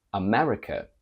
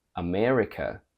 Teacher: in British we keep a normal open E from bed in American however this e sound goes down and becomes longer from British to American we have America America very very Terri